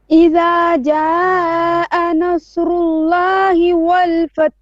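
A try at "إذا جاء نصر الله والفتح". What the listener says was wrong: Okay, don't say fat'ah. Now you're saying fat'ah. You're adding a hamza. Fath, not fat'ah. So try to say fath, and then go straight to the ha. Fath.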